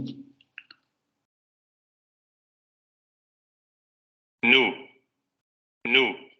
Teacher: bloqueo en la zona alveolar, el aire sale por las fosas nasales y vibración de cuerdas vocales